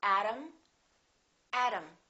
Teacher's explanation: T between two vowels sounds exactly like the D.